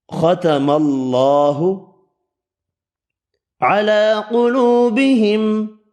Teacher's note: کھڑی زبر واو مدہ ایک ایک الف کی مقدار میں کھینچ کر پڑھیں گے، قاف پر پڑھا جائے گا، میم کا اظہار ہوگا۔